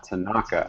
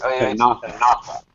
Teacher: It is common in Japanese pronunciation to give the stress to the second syllable. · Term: stress the second syllable